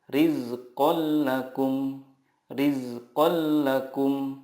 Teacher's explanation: bilaunah adalah nun sukun atau tanwin bertemu dengan lam atau ro cara membacanya meleburkan nun sukun ke huruf berikutnya tanpa guna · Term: Idam bila gunah